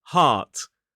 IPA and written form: hɑːt (heart)